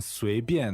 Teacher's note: 随 便, that's second tone, fourth tone.